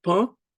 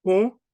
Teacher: Un, on, are nasal vowels in Haitian Creole.